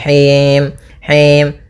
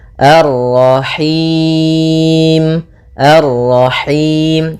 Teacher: Nah, ini masuk hidung, tapi enggak mau, dia lepas dari yang namanya masuk hidung dan juga lepas dari namanya imalah, yaitu harus kasrah sempurna